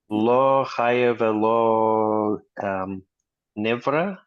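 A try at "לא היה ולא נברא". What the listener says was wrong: no haya. It's not chaya. It's haya.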